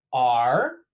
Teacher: just like the number 2, but with a rising tone